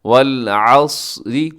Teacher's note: آگے والعصر، صاد موٹا پڑھا جائے گا، اسے اگر آپ باریک کریں گے تو سین کے اندر تبدیل ہو جائے گا۔ والعصر، را باریک ہوگا، صاد موٹا ہے، را باریک ہے۔ را کے اوپر کوئی حرکت ہو را موٹی ہوتی ہے، نیچے ہو تو را باریک ہوتی ہے۔